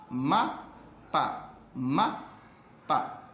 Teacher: Hay un pequeño silbiteo de su nariz cuando usted pronuncia ese fonema. ¿Qué es lo único que tienen en común estos dos fonemas, de la letra M y la letra P? Que ambos son bilabiales.